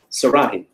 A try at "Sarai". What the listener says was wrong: No. There's no H. Say it again.